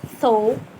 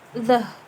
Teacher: T dibaca dengan jelas, sedangkan the dibaca dengan ada seperti gelembung, ada udara yang keluar di antara sela-sela mulut